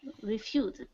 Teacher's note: The S here makes a Z sound. Z is a voice sound. This is one I often hear people make mistakes on, the Z sound.